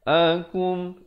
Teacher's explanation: izhar syafawi, jangan dipanjangkan, sempurnakan saja bunyi kumnya